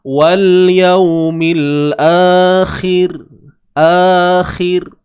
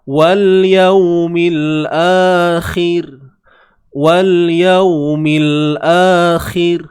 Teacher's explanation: kita kena berhenti dengan melahirkan bunyi yang nipis pada huruf roh